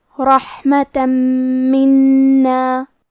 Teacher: کلمت منا میں نون پہ تشدید ہے لہذا ہمیں دو حرف کے برابر نون کو پڑھنا ہے · کلمت رحمتاً میں حرف را پہ زبر ہے تو ہمیں را کو موٹی آواز میں پڑھنا ہے